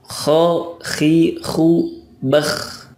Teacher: ketika kho, suaranya o tidak boleh maju mulutnya